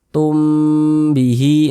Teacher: Mim sukun yang berjumpa dengan huruf ba hukumnya ikhfa syafawi. Dibaca dengan dengungan, nah, dibaca dengan gunnah. Jadi suaranya itu kita tahan, kita panjangkan sejenak.